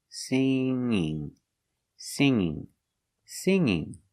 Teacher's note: when you change a verb with ing there's no G sound